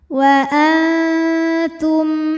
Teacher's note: mim sukun menghadapi huruf selain mim dan ba yaitu huruf ha cara baca mim sukunnya adalah jelas m-nya jelas tidak ditahan · dibunyikan dengan tebal tidak rileks lidahnya tegang ya suara mengisi mulut kita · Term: izhar syafawi, tafkhim